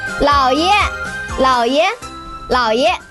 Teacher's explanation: 老 third tone, 爷 neutral tone.